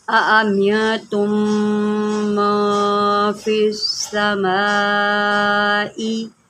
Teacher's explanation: میم مشدد ہے گنہ کریں